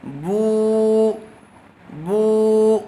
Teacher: بو، با الٹا پیش بو، الٹا پیش برابر ہوتا ہے واو مدہ کے، با واو پیش بو، واو ساکن سے پہلے پیش آیا ہوا ہے، اسی لیے یہاں پر واو مدہ ہوگا اور اس کو تھوڑا کھینچ کر پڑھیں گے